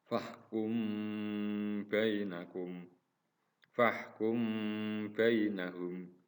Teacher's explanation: satu Ikhfa Syafawi yaitu apabila mim mati bertemu dengan ba maka cara membacanya harus dibunyikan samar-samar di bibir dan didengungkan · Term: Ifa syafawi